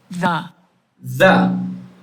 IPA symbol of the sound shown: ð